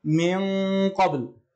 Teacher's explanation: تخفى النون في القاف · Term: إخفاء حقيقي